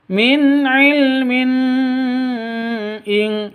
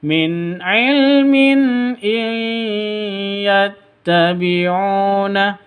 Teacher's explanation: Non mati bertemu dengan ya. Cara bacanya masuk ke ya disertai dengung dua ketukan. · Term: idgham bi gunnah